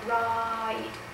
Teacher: you spend 90 of your time on the first vowel and only 10 of your time on the second vowel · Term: 90 10 rule